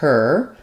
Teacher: it's just the ER sound no gliding no movement